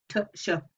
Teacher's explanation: They're made in the same place though, and it'd be very hard to move whilst making consonants. So we start with a t, complete closure, and we finish with a sh, which is a fricative